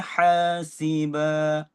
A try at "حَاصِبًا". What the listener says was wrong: Sad tu. Bukan sin. Hasiba sin. Hasiba. Tebalkan sad. Tebalkan dia.